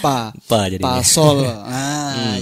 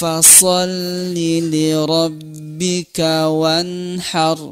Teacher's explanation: gigi seri atas kita ini masuk ke perut bibir bawah kita kita ya Fa ah kasih hembusan angin sedikit ya karena sifatnya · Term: huruf Fa